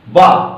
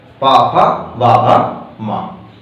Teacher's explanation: दोनों होंठ के प्रयोग के बिना आप नहीं बोल सकते। जैसे पा बोला आपने तो दोनों होंठ प्रयोग में आएंगे, यदि नीचे वाला कट गया तो पा नहीं बोल सकते। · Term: पा वर्ग